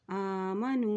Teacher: हमज़ा के ऊपर खड़ी ज़बर है तो उसको एक हरकत लंबा अदा करेंगे